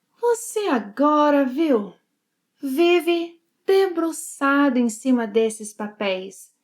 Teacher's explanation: She shortens 'você' to 'cê'.